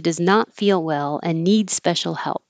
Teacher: i took the d off of and because we don't need to say it